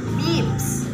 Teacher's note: This type pronounced with three characteristics, namely the highest elevation of the tongue is made in front of the mouth and the lips are not rounded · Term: high front unrounded vowel